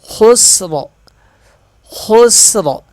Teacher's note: وقف کی صورت میں را کو موٹا پڑھیں گے، خسر، خسر، وہ اس لیے کہ را وقف میں ساکن ہو رہا ہے، اس سے پہلے والا حرف بھی ساکن ہے۔